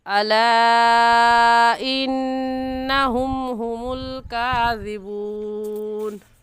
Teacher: और इस मद को हम 3 अलिफ की मिक़दार खींचेंगे, इससे कम या ज़्यादा नहीं खींचेंगे। इन्नहुम में नून मुशद्दद है, नून मुशद्दद पर हमेशा गुन्ना होता है, तो गुन्ना करके पढ़ेंगे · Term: मद्दे मुनफसिल